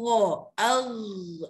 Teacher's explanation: Mengangkat belakang lidah sehingga bersambung ke langit-langit lembut. Tu dia. Dia kata mengangkat belakang lidah. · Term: ghain